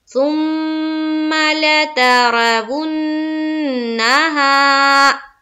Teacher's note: अलीफ मद्दा को हम कितना खींचते हैं, एक अलीफ के बाकदर, तो यहाँ पर हम खींचेंगे, सुम्मा लतरवुन्नाहा।